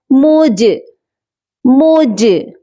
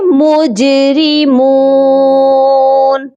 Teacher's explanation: ساکن ہوتے ہیں تو ان پر قلقلہ لازمی کیا جاتا ہے، جیم کے اوپر آپ کو ساکن کا نشان بھی نظر آ رہا ہوگا، تو یہاں پر ہم نے جیم پر قلقلہ کرنا ہے